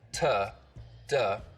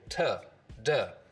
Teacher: And what I mean by that is that instead of using this part of the tongue, the blade for things like t and d sounds, uh, so that there's a lot of surface contact, t duh. We just use the narrow edge of the tongue, so it's a more focused contact area.